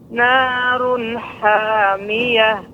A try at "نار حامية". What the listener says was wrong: Ya, huruf ra di sini run tebal Ibu. Narun, narun, ya. Kalau tipis pengucapan begini. Narun, narun, narun, narun. Memang untuk ketika huruf ra ini berharokat dhammah ini agak sedikit perlu kita perhatikan pengucapannya. Kalau tidak terkadang menjadi tipis. Narun, narun, narun.